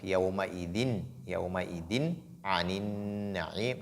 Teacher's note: Donc, il faut faire ce qu'on appelle al-idhar. Donc, faire apparaître la lettre nun qui est dans le tanwin sans pour autant faire une nasalisation